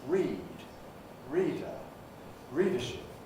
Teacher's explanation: So we've got read, reader, readership, taking approximately the same time to say. So the E bit of that is subject to this rhythmic clipping.